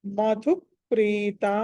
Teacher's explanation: మధు ధ అన్నది మళ్ళీ మహాప్రాణం కాబట్టి ఒత్తి పలకాలి